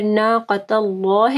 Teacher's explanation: اللہ کے نام سے پہلے تا کے اوپر زبر ہے تو یہاں پہ بھی اللہ کا نام جو ہے وہ پر پڑا جائے گا، ٹھیک ہے، اور قاف کو موٹا پڑھنا ہے۔